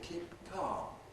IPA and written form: ˈkiːp̚ ˈkɑːm (keep calm)